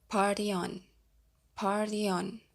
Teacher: the letter Y links to the following vowel sounds as a Y